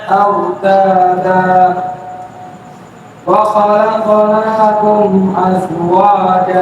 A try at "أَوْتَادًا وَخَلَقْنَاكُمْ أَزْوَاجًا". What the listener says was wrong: তুমি তো একদম মানে মূর্তির মতো পড়ছো ভয় পাবে মানুষ যে আওয়াজটা কোন জায়গা থেকে আসতেছে ঠোঁট নড়ে না মুখ নড়ে না চোখ নড়ে না কিছুই নড়ে না আওয়াজটা আসে কোন জায়গা থেকে হ্যাঁ মূর্তির মতো পড়লে হবে না যে وخلقناكم أزواجا واجا কেন ওয়াজা